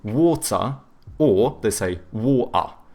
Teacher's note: the British, they tend to have either hard T's or they do like the glottal T, so but then they do a schwa instead of pronouncing the R